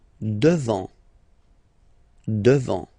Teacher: Final T not pronounced. Devant.